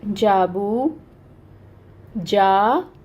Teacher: واو ساکن سے پہلے پیش آ گئی ہے، تو پھر اب اس کو 2 حرکت لمبا کریں گے. جا کو بھی 2 حرکت لمبا کر رہے ہیں کیونکہ الف سے پہلے زبر آ رہی ہے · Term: واو مد, الف مد